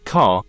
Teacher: in car technically these words are spelled like short a but the sound of the a is distorted by the controlling r that follows it